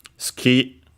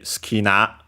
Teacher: since the U is between two unvoiced consonants, you barely hear it or not hear it at all